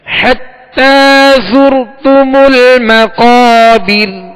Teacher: ہم نے زا کو سختی کے ساتھ پڑھنا ہے، سیٹی کی آواز میں پڑھنا ہے